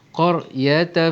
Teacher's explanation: ra di sini tebal kerana ra di sini mati sebelumnya berbaris atas